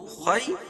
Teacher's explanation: یا لین یا ساکن سے پہلے زبر ہے اور خا کو پر پڑھیں گے